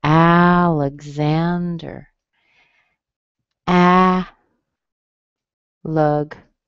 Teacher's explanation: Hear a little G in there? That's the G-Z that makes the X.